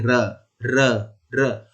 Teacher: ऊपर वाले जो दांत हैं उनके जड़ पे छू के आ रहा है र बोलने में, तो हमारी जीभ इसके जड़ को छूती है, इसीलिए इसे दंत मूल कहा जाता है। · तो यह बोला जाता है तालु से, इसीलिए इसे वर्ग को, इसके वर्ग को तालव्य कह दिया जाता है। और र का उच्चारण स्थान होता है र का दंत मूल।